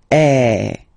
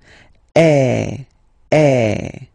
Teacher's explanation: So it's really open. I mean, the sound is really open, and normally your mouth should be opened a little bit more than with the accent aigu as well. Okay, so it goes like eh.